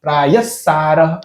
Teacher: એટલે થોડોક જ આમ હકારનો ઉચ્ચારણ થોડુંક જ આવે છે એટલે પ્રાયહ સાર એમ નથી બોલતા પ્રાયસાર એમ બોલીએ છીએ આપણે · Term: અડધા વિસર્ગ